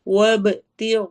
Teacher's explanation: غائن موٹے حروف میں سے اس لیے ہم اس کو موٹا کریں گے اور ساتھ ہی الف بھی موٹا ہوگا۔